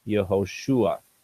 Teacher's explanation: here's his new name, Yehoshua, and the stress is on the shu here